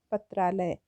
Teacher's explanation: पत्र में जो अ है और आलय में जो आ है, दोनों अ और आ मिल गया है। तो आप वैसे भी नॉर्मली देखिए, जब हम कोई शब्द बोलते हैं और बहुत जल्दी में बोलते हैं तो वो मिल के एक हो जाता है, मतलब संधि हो जाती है।